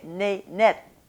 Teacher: tongue behind my bottom teeth so it's anchored there and then the closure is not going to be made against the gum ridge it's going to be made against the upper teeth · the closure is coming much more firmly and fully into the curve of the upper teeth to make a much more firm closure.